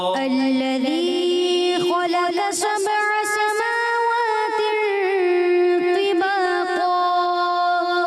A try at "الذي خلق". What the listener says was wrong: الذي خلق، قاف کو پر رکھنا ہے. دوبارہ پڑھیے.